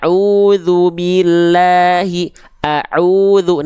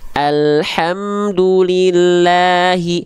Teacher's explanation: huruf hamzah ketika berharakat fathah dibaca tidak o tapi a tipis berarti huruf hamzah